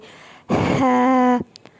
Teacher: جب ہا کی ادائیگی کرتے ہیں تو ہمارے منہ سے ٹھنڈی سانس باہر آنی چاہیے